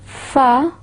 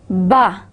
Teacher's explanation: In fa, we will feel a partial blockage of airflow. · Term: fricatives